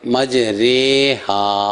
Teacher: یعنی جس طرح اردو میں یا فارسی میں یا مجہول ہوتی ہے تو اس کے مطابق مجریہا اس طرح پڑھنا ہے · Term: امالہ